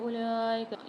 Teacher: اولئک میں واو کو سائلنٹ کر دیں گے، لام کے اوپر مد ہے، کھڑا زبر بھی ہے، 5 سے 6 الف میں دار کھینچیں گے۔